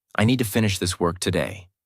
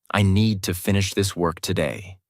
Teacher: Need, finish, work are strong. Other words are softer. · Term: stress